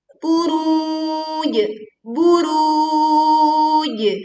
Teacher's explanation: kita berwakof di jim sukun dengan memantulkan suaranya dengan kuat